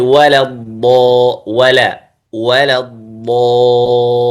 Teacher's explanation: اللام في كلمة الضالين مرققة، إنما المفخم في الضاد.